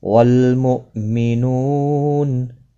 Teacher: حمزہ ساکن کو جھٹکی کے ساتھ پڑھیں گے۔ نو و مدہ ہے، ایک الف کی مقدار کے برابر کھینچ کر پڑھیں گے، اور وقف کی صورت میں نون ساکن پڑھا جائے گا۔